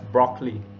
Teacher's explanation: in some cases, we reduce the middle syllable as broccoli.